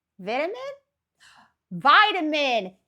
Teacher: there is the fact that I pronounce the T and most of you guys don't